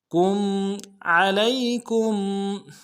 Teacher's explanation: کاف کو میم ساکن کے ساتھ ملانا ہے، میم ساکن میں غنہ کریں گے